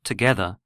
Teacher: the word together has a stronger beat on its second syllable